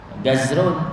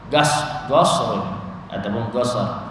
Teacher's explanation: Ada yang sebut qaf dengan jim bagi orang Yaman. Gazrun dia sebut qasrun jadi gas bukan qaf jadi ga.